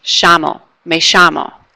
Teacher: they do a sh sound, like an SH, sh.